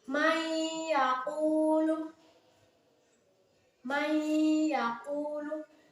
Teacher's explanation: Jadi antara nun sukun dan iya itu dimasukkan dengan mendengung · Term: idgham bigunah